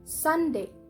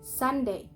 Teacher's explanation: And the syllable sun is stressed